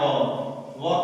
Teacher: ये भी अकेले नहीं, वह भी दो चीजों के मिलने से, दंत और ओष्ठ के मिलने से